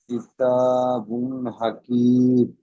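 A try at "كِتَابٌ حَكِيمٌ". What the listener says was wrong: হাকিমুন মিম দুপেশ মুন। হ্যাঁ, কিতাবুন হাকিমুন। জি, এইভাবে উচ্চারণ তুলবেন।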